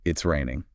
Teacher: if you say it with like a flat intonation yeah it's just a statement of fact